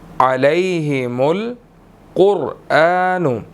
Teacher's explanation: قرآن کے اندر قاف اور را جو ہیں وہ دونوں موٹے پڑھے جائیں گے, اور آنو حمزہ کے اوپر کھڑی زبر ہے, اس کو 1 سیکنڈ ہم لمبا کریں گے.